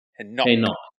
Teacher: So like with a stress on the second syllable.